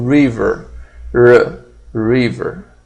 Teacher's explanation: o R retroflexo do inglês